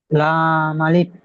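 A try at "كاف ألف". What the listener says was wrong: লাম নয়, লাম নয়। কাফ আলিফ।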